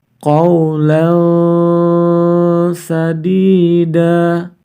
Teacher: facfa in Kemudian bertemu dengan salah satu huruf ikhfa Sin maka tanwin fathatain harus dibaca samar-samar kemudian baru kita baca huruf sim-nya